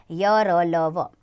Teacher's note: इन्हें बोलते समय सांस मुंह के किसी भाग को छूती तो है परंतु रुकावट बहुत कम होती है। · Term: अंतस्थ व्यंजन